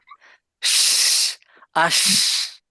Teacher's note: শিনের মাখরাজ hard প্যালেট, উপরে টারা আর জিভা, কিন্তু বাতাস আপনি বের করতে পারবেন না যদি জিভার মাঝখানে ফাঁকা না রাখেন। এইখানে ওইখান হ্যাঁ, দিয়ে জোর করে বাতাস বের করতে হবে। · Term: তাফাসি